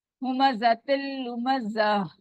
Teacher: जा का मखरज आपको पता है, बजिंग साउंड आएगी, ज वाली।